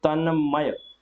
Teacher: त के बाद अगर म आएगा तो त का आधा नासिक्य न हो जाएगा, आधा न हो जाएगा, तो त की जगह न लगेगा तो तन्मय, तो तन्मय ऑप्शन सी इसका बिल्कुल सही जवाब होगा।